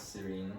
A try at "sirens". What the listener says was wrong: No, not sir. Sirens.